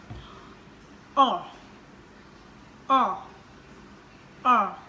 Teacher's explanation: mulut kalian dibuka seperti kan ngomong O, tetapi yang diujarkan adalah huruf A.